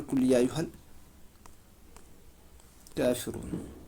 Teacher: کاف کے اوپر کھڑا زبر ہے، کھڑا زبر کو 1 الف کے برابر کھینچتے ہیں ہم، 1 الف کے برابر کھینچ، یعنی الف مدہ بن جاتا ہے یہاں پر۔